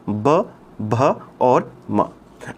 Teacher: जो पा वर्ग है वो होठों से बोला जाता है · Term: होंठ वाला